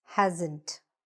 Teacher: There is an s but it sounds a little bit more like a z sound.